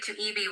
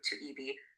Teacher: If you say to EB with a high tone, you mean watch or clock. >> But if you shift that to a falling tone to EB, the word now means correct or good